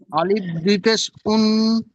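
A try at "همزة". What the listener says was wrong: আলিফ না আলিফ না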